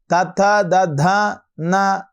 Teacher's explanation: అక్షరాలు పూర్తిగా కూడా దంతముల ద్వారా మనం పలుకుతూ ఉన్నాం